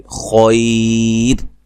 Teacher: اس سے پہلے کوئی بھی حرکت کی طرف آپ نے نہیں دیکھنا، زبر ہے، پیش ہے، زیر ہے، وہ نہیں دیکھا جائے گا، صرف را ساکن سے پہلے اگر یا ساکن آ گئی ہے تو اس را کو ہم باریک پڑھیں گے